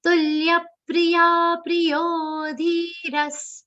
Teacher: The second pri should not be long.